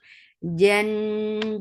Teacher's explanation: Jan, Jim is majhura, for fatha upon jaws, attach with noon, noon will get sifa of kunna, this kunna is akmal, so keep the sound in your nose for a longer time